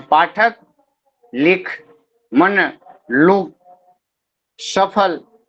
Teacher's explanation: इन सभी शब्दों के उच्चारण में अंतिम अ स्वर का लोप कर देता